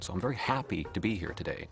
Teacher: they go up early in a sentence stress wise and then it come down hard at the end